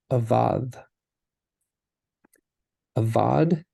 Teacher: that dalit does not have a daguesh and so it's going to be the the tongue in between the teeth